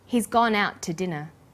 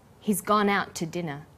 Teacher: The t sound is pronounced only once.